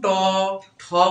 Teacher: জিহ্বাটা কিন্তু তালুতে লাগতেছে না, কোথায় লাগতেছে? তালুর একটু পরে। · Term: মূর্ধন্য বর্ণ